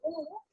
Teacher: when I say o my lips are rounded so it's a closed vvel and when I say A then